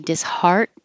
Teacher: So you don't say the T when you say disheart. Your tongue goes to the T position.